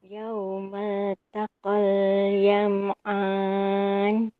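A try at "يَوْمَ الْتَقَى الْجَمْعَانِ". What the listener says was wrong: Ni huruf jim jaman yaum.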